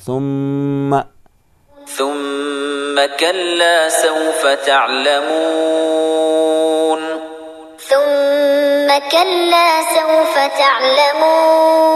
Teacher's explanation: یہاں پر میم کے اوپر تشدید ہے تو اسے ڈبل بھی پڑھیں گے اور غنہ بھی ہوگا